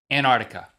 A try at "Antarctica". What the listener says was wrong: That is technically incorrect. It's Antarctica. There's a C in there before that T. Antarctica. Yeah, Antarctica. But most people say Antarctica.